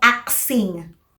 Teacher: Nagkakabaliktad yung S tsaka yung K, and sometimes nagtutunog axing. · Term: metathesis